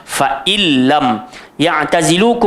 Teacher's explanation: Fa illam, nun mati bertemu lam jadi idgham bila gunnah, masuk terus.